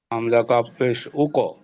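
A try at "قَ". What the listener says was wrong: এটা কাপ না, আমি কপ বলতেছি, একটু ভালোভাবে ফলো রাখতে হবে, হামজা কপ পেশ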